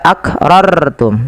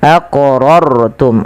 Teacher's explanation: Artinya rnya dibaca dengan tebal